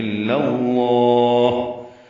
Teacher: الا الف مدہ ہے, لام کو لام سے ملا دیا. لام کو پر پڑھیں گے کیونکہ پیچھے اللہ کے لام پر زبر ہے.